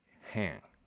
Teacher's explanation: And so what you get is, at the most extreme form, you get like hang. Like you get H and a nasalized ash that's long, and that's it.